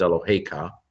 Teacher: Notice how the accent is on the hey, not on the ka. Normally Hebrew accents the last syllable, but with this particular form where you have ka on the end, it's your God is what it is, Eloheka.